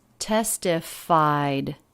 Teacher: in this yeah notice the e d ending here in testified it's just a sound it's the d sound so there's no extra syllable it's not a vowel and a consonant it's just a consonant